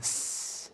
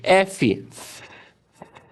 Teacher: Quando a gente vai fazer esse som, articular esse som, o ar passa livremente, as nossas cordas vocais não vibram. Por isso que é voiceless, surdo. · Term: Sons surdos